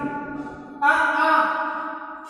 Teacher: आ का उच्चारण स्थान कंठ है